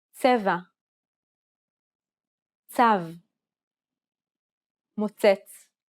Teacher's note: This consonant sound is like a combination of a T and an S sound. It starts off as a T sound, but ends with an S sound.